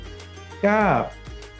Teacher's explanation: কাফ। কাফ উচ্চারণের সময় আমাদের গলার গভীর থেকে উচ্চারিত হবে।